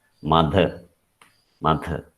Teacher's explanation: But when you say th, there is a vibration you can feel in your hands when you touch the throat.